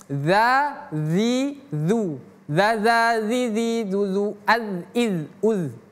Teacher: ujung lidah ini makhrijul hurufnya ujung lidah bertemu gigi seri atas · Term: huruf zal